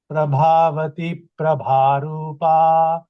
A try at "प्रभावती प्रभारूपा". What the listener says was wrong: In the first line, first word ends with a dirghakshara, long vowel. Prabhavati Prabharupa.